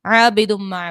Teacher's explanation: اس کے بعد عابدم میں ہے الف سے پہلے زبر تو الف مدہ، اور دو پیش کی تنوین کے بعد میم ہے. یہاں پر میم جو ہے حروف یرملون کا ہے، ادغام مع الغنہ کا قاعدہ ہوگا، غنہ بھی کریں گے